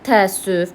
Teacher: Təəssüf sözündə tələffüz zamanı qoşa əindən biri düşür, digəri uzanır. Biri düşür, digəri uzanır deyə qalır altı səs. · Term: səs düşümü